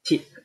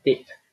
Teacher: these two sounds are contrastive from each other only in the voicing feature